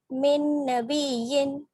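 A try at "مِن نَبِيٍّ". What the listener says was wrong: या के ऊपर जोर लगाइए थोड़ा सा।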